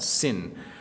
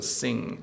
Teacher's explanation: So sin just stops with the N sound, sin. But sing, there's an ing sound there, so sing.